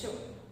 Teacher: श टाळा आणि जीभ यांचा स्पर्श एकमेकांना होतो म्हणून याला काय म्हणतो आपण, तालव्य